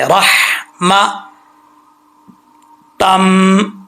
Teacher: اس ہا کا تعلق سینے کی طرف نہیں ہے، حلق کی طرف ہے، اس کو بریک پڑھیں گے